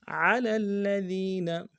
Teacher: فأنزلنا غیر الذی قیل لهم فأنزلنا علی الذین ظلموا رجزا من السماء، علی الذین ظلموا رجزا علی الذین، عین کو موٹا ادا کریں گے، لام کو لام کو ساتھ ملانا ہے، لام کے اوپر تشدید زور دیں گے